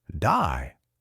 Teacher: Australian English has its own style. Day might sound like die.